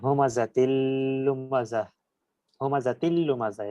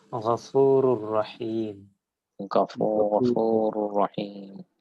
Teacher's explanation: তানবিনের নুন কিংবা নুন সাকিনটা উচ্চারিত হচ্ছে না, বরং পরের যে বর্ণটা আছে ওটাই দুইবার উচ্চারিত হচ্ছে